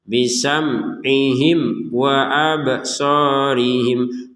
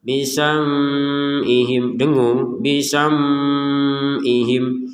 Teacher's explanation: Jangan sampai ada samar atau dengung sama sekali. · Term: jelas